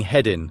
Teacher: So instead of saying heading, we're just saying headin' with the final G left out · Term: elision